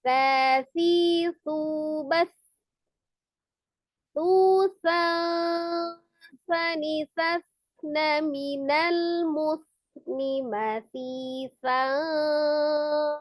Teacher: Jadi bukan susan begitu, tidak juga susang juga tidak, tapi susan sani ya. Jadi ketika mengucapkan nun sukun itu lidahnya sudah membentuk makharijul huruf sa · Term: ikhfa